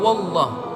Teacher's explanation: Atau wallah, huruf wawnya berbaris fathah dan lamnya dibaca dengan tebal. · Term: lam tafkhim